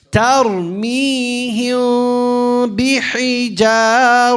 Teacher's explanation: Nasalization. Hold it for 2 counts and give it nasalization.